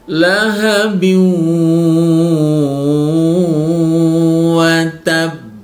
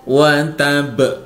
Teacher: Karena ada tasdidnya, maka perlu ditekan dulu baru dipantulkan. Ada penekanan dulu. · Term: qalqalah